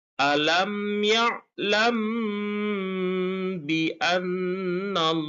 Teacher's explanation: dengan suara yang samar antara mim dan ba pada bibir. Kemudian ditahan kira-kira dua harakat atau dua ketukan seraya mengeluarkan suara ikfa dari pangkal hidung. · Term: ikhfa safawi